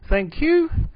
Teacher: the final rising intonation of thank you